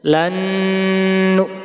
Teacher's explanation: Lanjut, ini bacaan idgham bi gunnah, nun sukun ketemu nun, bacanya harus mendengung.